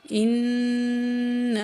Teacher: نون میں غنہ کرنا ہے، نون پہ تشدید ہے